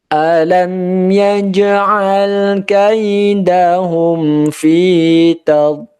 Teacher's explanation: betul-betul seolah-olah itu rapat sehingga tidak ada udara yang tertiup keluar. Fi tadlil, lil ini kasrah diikuti ya sukun maka dibaca panjang, dan karena diwakafkan maka arid lisukun panjangnya boleh sampai 6 harokat.